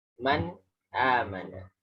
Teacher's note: jadi nunnya jelas, a-nya juga jelas. Tidak ada unsur dengungnya.